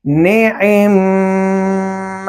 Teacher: بجائے اس کے اصل صورت میں اس کو ہم پڑھتے نعم، یہ مشکل تھا، تو لہٰذا پہلے میم کو ہم نے ساکن کر دیا، ساکن کر کے دوسرے کے اوپر تشدید آ گئی۔ جب تشدید آ گئی تو ساکن میم اس کے اندر مدغم ہو گیا۔ مدغم ہونے کی صورت میں اب صرف اس میم کو پڑھیں گے نعم۔ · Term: ادغام کبیر